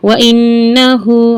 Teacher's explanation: नून पर श अच्छे से गुना करेंगे